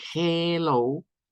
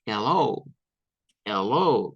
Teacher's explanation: en vez de usar el sonido E, se puede usar un sonido un poco más débil, que es el sonido del schwa.